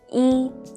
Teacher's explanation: character e is its pronunciations to be more exact it's tones when e is used as a numeral in sequence such as when you're counting it is the first first flat tone